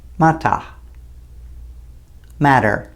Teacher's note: Sometimes in British English, the t is very clear, and other times, the t is almost entirely dropped, whereas in North American English, the t is changed sometimes to a /d/ sound